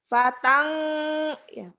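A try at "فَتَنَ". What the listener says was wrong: Jangan patang ya. Ikhfanya kalau nun mati atau tanwin ketemu fa, bunyi M. Kayak bilang kita ember, tapi bilang ember. Fateng gitu. Fateng, bibirnya agak mingkem. Fateng, angnya tetap ada. Jangan patang.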